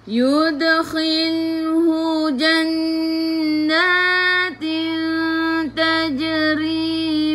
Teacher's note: Jadi ikhfa hakiki, dengung bawa ke sisi huruf ta.